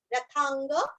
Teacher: रथांग, था के ऊपर आघात, वांग्मय का ग और नीचे का ग पूरा पढ़ना है, रथांग।